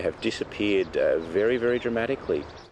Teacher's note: when stressed the H sound is pronounced